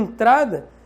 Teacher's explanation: como você diz em entrada o som nasal que o som sai pelo nariz